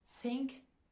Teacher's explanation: ici c'est un TH sourd c'est-à-dire on va pas mobiliser les cordes vocales